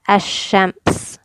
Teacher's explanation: skip the lam and go straight to the sheen